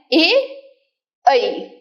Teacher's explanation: उच्चारण करते वक्त आपको थोड़ा सा साउंड अ आ का आएगा और थोड़ा सा साउंड इ का आएगा